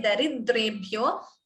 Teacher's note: So when you say daridrebhyo, this d is doubling before dre, dvitvam